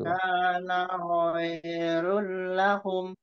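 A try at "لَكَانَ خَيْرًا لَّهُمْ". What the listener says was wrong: Khairol, khairol. Naknya jangan panjang. Lakana khairol lahum.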